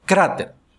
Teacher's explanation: Palavra grave terminada em consoante se acentua. A sílaba forte é cra.